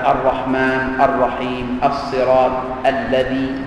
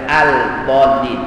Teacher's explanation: lam dimasukkan ke dalam huruf ra, ke dalam huruf selepasnya, sehinggalah lam tadi itu tidak lagi kedengaran pada bacaan. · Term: idgham syamsi